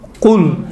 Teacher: زبان کی جڑ کو آپ نرم والی جگہ سے آپ اوپر تالو کے طرف لگائیں تو قل نکلتا ہے